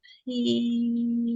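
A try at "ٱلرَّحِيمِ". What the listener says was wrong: Ya, rohnya juga tidak panjang. Nirrahim. rohnya dia fathah, pendek, tidak ada tasdid di H. Rohim beda dengan Rohman.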